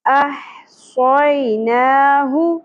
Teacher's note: یا ساکن سے پہلے زبر حرف لین نرمی سے ادا ہوگا. نون کے اوپر کھڑی زبر ایک الف کے برابر کھینچنا ہے.